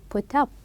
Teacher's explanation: we will link them as if they were one word. Then we are going to stress the second part.